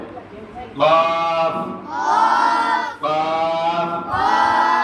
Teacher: কফ বলতে গেলে মনে হবে আওয়াজটা ডবল হচ্ছে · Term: কলকলা